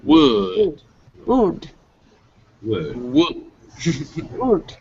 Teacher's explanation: your lips are going to be really tightly round then they're going to open way up and then you're going to bring them back in so whoa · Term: w sound